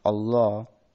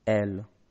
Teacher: in Arabic it sometimes becomes dark and more velar